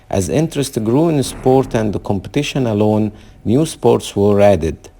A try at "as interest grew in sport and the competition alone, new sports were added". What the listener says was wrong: Okay, now you got to work on the tone there. So let's look at that sentence. So over time, as interest grew in sport and competition alone, new sports were added.